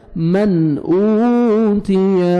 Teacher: نون ساکن کے بعد حروف حلقی میں سے حمزہ ہے، آپ نے اظہار کرنا ہے ، من اوتیہ، واو مدہ 1 سیکنڈ، حمزہ کو کھینچنا ہے،